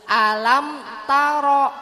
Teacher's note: Ro-nya dibaca tebal. Tafhim ya Bu ya, karena ro-nya fathah, berharokat fathah.